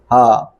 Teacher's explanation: یہ چھوٹی ہا ہے، اس کی آواز صرف نارمل ہا، سینے سے اس کی آواز نکلیں گی، چیسٹ سے ہا۔